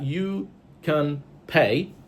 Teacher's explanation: the verb pay is stressed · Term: sentence stress